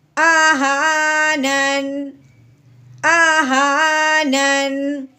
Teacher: تو ساکن کرنے ہوئے ہم نے صرف نون کی ہلکی سی آواز نکالنی ہے